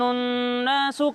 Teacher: غنہ کرتے ہیں، یعنی ناک میں آواز لے جا کر پڑھتے ہیں۔ تو یہاں پر بھی جب ہم نون کو پڑھیں گے تو غنہ کے ساتھ پڑھیں گے، ٹھیک ہے؟